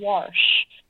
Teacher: My mom says wash, and I just feel like there's an invisible R in there that needs to be pronounced.